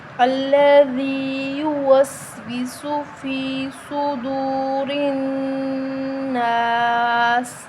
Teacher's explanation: صاد کو موٹا پڑھیں گے, حروف مستعلیہ ہے · را کے نیچے اب زیر آ گئی ہے تو ہم را کو باریک پڑھیں گے